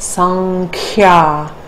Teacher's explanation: Samkhya is actually pronounced sankhya because we want to take the anusvara to the nasal corresponding with ka.